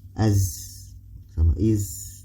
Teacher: Sofir yaitu sifat yang dimiliki oleh huruf sod, sin sama zai. 3 huruf ini memiliki sifat sofir. Jadi ada suara desis